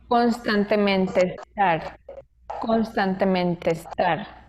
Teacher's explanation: Son dos palabras, constantemente estar, pero él no las separa. Lo contrario, las conecta a través de la E y suena como constantemente estar, constantemente estar. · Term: vocales idénticas